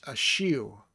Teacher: It's more of a W sound than an R at the end.